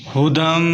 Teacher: ھدم یہاں پر غنہ کریں، میم مشدد ہے، میم کے اوپر شد ہو یا نون کے اوپر شد ہو غنہ کرتے ہیں۔